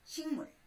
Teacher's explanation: 기역과 미음이 만나서 이음과 미음으로 바뀌었습니다. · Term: 비음화